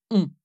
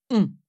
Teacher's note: il se passe quelque chose dans le fond de la bouche la langue se recule et le voile du palais le véomme s'abaisse ce qui fait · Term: la nasale